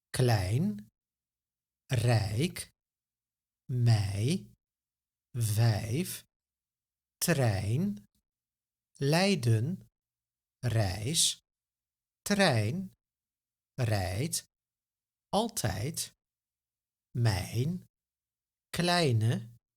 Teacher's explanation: Did you notice that there is no phonetic difference between the korte ei and the lange ei? In the phonetic alphabet, which represents how letters are pronounced, they both get the same symbol, ei. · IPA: [ɛi]